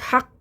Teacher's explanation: कफ को मोटा पढ़ना है